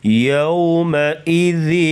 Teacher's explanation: یوم کی واو جو ہے لین ہے، اس کو نرمی کے ساتھ ادا کرتے ہیں. یومئذ، ذن یہاں پر اظہار ہوگا، یعنی غنے کے بغیر پڑھیں گے.